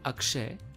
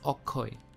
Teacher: bengali tends to keep this consonant vowel consonant vowel structure and really does not like this consonant consonant pair